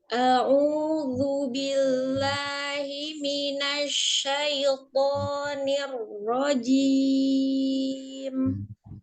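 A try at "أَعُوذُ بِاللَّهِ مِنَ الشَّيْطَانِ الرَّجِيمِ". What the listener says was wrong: Hati-hati nya tidak memangangkan bibir ya. Tetap dibuka.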